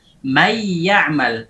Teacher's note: Jadi, ketika sudah berubah nun menjadi huruf yang diidghamkan, baik itu waw atau ya, maka suara gunnah menjadi panjang. Suara gunnahnya ditambah gunnahnya disertai dengan pengucapan huruf yang diidghamkan tadi, yaitu ya atau waw atau mim atau nun.